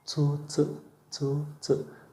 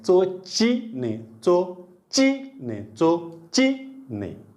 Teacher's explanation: चो चो म्हणताना समोरच शेंडा आणखी, ची म्हणताना जिभेच्या कडा उचलल्या